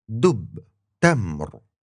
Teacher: These two sounds are really similar to English's D and T, but the tongue is a bit further forward. It's touching your upper teeth.